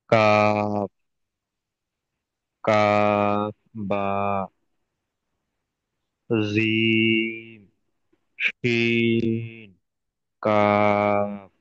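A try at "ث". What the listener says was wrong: কাশিন নয়, এটা সা। দেখেন, সার সিনের উপরে তিনটে নোক্তা, এটা আমরা সবাই জানি। যে বুঝবো কেমন করে, দেখেন সিনের এমনই তিনটে আঁকড়ি থাকবে, বুঝতে পারছেন, এমনই। সার কোনো আঁকড়ি থাকবে না, এমনই থাকবে।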